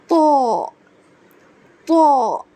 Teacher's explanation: جو ہے یہ پر حروفوں میں سے ہے، یہ موٹے حرفوں میں سے، اس کو پڑھیں گے تو، منہ کو گول کر کے